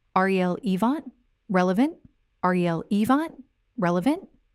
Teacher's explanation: The correct form is R-E-L-evant. 3 syllables, R-E-L, E-vant, R-E-L-evant. The stress is on the first syllable.